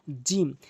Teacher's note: জিহ্বার মাঝখানটা। জিহ্বার মাঝখানের অংশটা উপরে তালুর সঙ্গে লাগাবেন